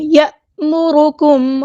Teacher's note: الف پہ دیکھیں یہاں پہ جزم سکون آئی ہے تو اس کو یا مرکم نہیں پڑھنا، یہ الف مدہ نہیں ہے